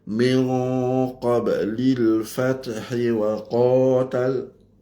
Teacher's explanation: Nun dengan qaf dia jadi ikhfa. Jadi qaf dia itu kita kena dengung dengan mufakhamah.